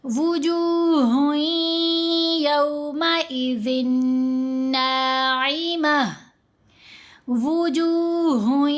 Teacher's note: ہا کو یا سے ملاتے ہوئے یرملون کا ادغام کیا، پھر زال کے نیچے 2 زیر، آگے نون مشدد، یہ بھی یرملون کا ادغام، تو زال کو نون سے ملاتے ہوئے ادغام کریں گے، دونوں جگہوں پر ساتھ غنہ بھی کریں گے۔